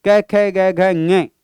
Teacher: कंठ मित्रों कवर्ग का उच्चारण स्थान होता है।